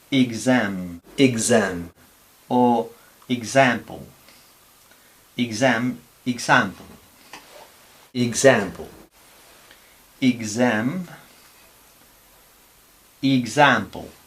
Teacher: Pero sin embargo, cuando tenemos a la X entre vocales, intervocálica, entonces no es este sonido, sino este sonido. Es una G con una S sonora